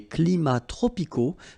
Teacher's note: we don't pronounce the S, and then we don't pronounce the T either